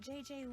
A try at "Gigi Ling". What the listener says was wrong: You mean Gigi Ling? Gigi. En français, you pronounce G like J and J like G. She may very well be JJ in America, but in France, she is Gigi.